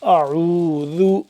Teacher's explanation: حمزہ زبر آ، عین واو پیش عو، اعو، ذال پیش ذو، اعوذ، اعوذ، ذال کو نرمی سے پڑھنا ہے، ذال کو دو دانتوں کے درمیان زبان کو لے کے جا کے ذرا سی زبان کو باہر نکالیں گے تو بالکل نرمی سے ادا ہوگا